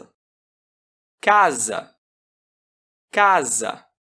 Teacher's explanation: Não é difícil notar que o primeiro A é mais longo que o segundo. Isso ocorre porque as vogais situadas em sílaba tônica antes de pausa sofrem alongamento.